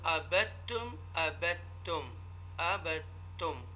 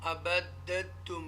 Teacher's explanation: the sakin letter is not read and the mutaharrik letter is joined with the mushadda letter